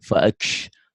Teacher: Ini bukan kol-kolah tapi huruf-huruf hams.